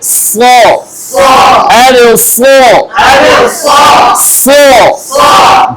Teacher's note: সফির হরফ কয়টা কি কি সাদ সিন জা সাদের মাখরাজ কোথায় জিহ্বার আগা সামনের নিচের দাঁতের পেট বা নিম্নাংশ ধারালো একটা আওয়াজ হবে